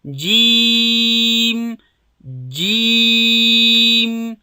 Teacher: درې الفه بیا کشوو ځکه چې مد لري